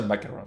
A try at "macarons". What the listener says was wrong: Macarons. Yes, macarons, not macaron.